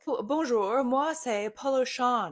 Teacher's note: in French, Poruchon is a nasal vowel. You don't hear the N. It's written with an N, but you don't hear it.